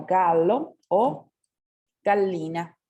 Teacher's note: Pero la doble L se va a pronunciar como alargada